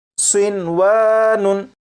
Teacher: نون ساکن اور واو کیونکہ ایک لفظ میں اکٹھے ہیں اس لیے یہاں پر ادغام نہیں کریں گے اور اسے پڑھیں گے صنوانن۔